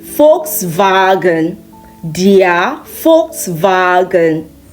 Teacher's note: German V is pronounced like the English F.